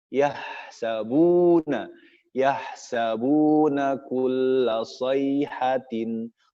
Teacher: Yahsabun, huruf ha, huruf rokhawah, keluarkan hamznya, tidak boleh ditahan.